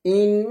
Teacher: ইন্নাল্লাহ না বলে একটা ল বলতে হবে মোটা করে, ইন্নাল্লাহা। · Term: লামটা মোটা